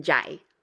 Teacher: it kind of goes up into your nose